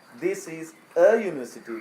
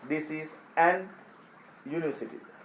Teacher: You අකුර you කියලා pronounce කරනකොට vowel sound එකක් හැදෙන්නේ නැහැ.